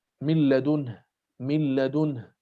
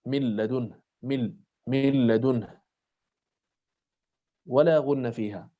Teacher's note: تحولت النون إلى لام، من لدنه · إدغام بلا غنة في اللام والراء